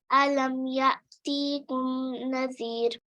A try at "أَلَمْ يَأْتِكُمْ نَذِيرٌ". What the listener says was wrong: Okay, यातिकुम ता को हमने लॉन्ग नहीं करना, अच्छा स्ट्रेच नहीं करना।